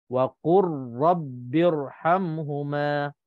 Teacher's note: kita tak baca dan tak bunyikan lam · Lam ini dah hilang, kita hanya baca ra yang bersabdu saja. Jadi sebutnya waqur rabbi.